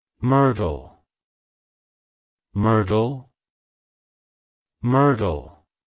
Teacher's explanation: emphasize the first syllable and soften the R sound. The T is then pronounced softly, almost like a D.